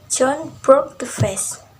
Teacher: Word John emphasizes because it is a new information introduced. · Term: New information pressure